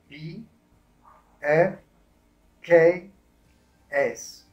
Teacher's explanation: Coloca suavemente tus manos, tus dedos en tu garganta. Cuando tú pronuncias estas letras, no hay mucha vibración en la garganta. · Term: consonantes sordas